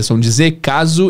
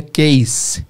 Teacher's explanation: que em português é som de Z, caso, em inglês é case, com som de S